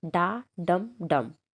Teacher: stress unstress और unstress, जैसे डा डम डम